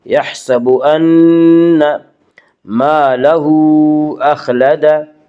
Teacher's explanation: نون مشدد غنہ ہوگا، غنہ کی مقدار 1 الف ہے